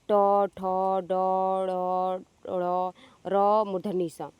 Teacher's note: आपके मूर्धन्य व्यंजन है। मूर्धन्य व्यंजन का मतलब है कि जीभ आपके मूर्धा पे स्पर्श कर रही है